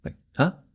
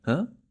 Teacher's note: make your voice go up at the end like a question